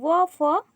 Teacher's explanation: दंतोष्ठ निचले ओठ और ऊपर के दांतों से